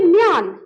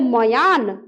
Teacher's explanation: मो के बाद तुरंत या आ गया म्यान